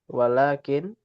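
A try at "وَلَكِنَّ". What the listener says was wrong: walakinna. Kalau lakin nanti beda.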